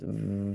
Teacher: it's an extended sound V you could just do that as long as you want that's why it's called a soft sound okay gimo ready this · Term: soft letter